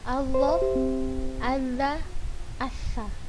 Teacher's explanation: Karena makhraj huruf zo, za dan sa itu ujung lidah kita ini hanya menempel pada dua gigi seri atas, bukan keluar